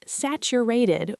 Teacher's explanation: We pronounce it saturated with a stress on the first syllable, sat.